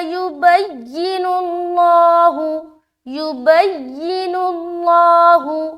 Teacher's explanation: نون کو لام سے ملایا، نل، اللہ، لفظ اللہ کا لام موٹا رکھ رہے کیونکہ اس سے پہلے کیا ہے؟ پیش ہے